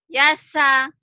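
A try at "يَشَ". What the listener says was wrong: Yasha. Shinnya belum lulus tuh. Shin. Yasha.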